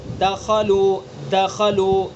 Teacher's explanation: دال کے اندر قلقلہ ہے، متحرک ہے دال، قلقلہ ہوگا اس کے اندر لیکن کم درجے کا قلقلہ ہوگا